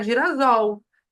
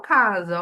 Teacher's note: o s entre duas vogais tem som de z